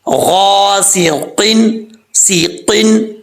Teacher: اس کے بعد ہے غاسقن، غین حروف مستعلیٰ میں سے ہے، پر پڑھا جائے گا، آگے الف ہے، ایک الف کی مقدار لمبا کریں گے، سین سیٹی کے ساتھ پڑھا جائے گا، قاف حروف مستعلیٰ میں سے ہے، پر پڑھا جائے گا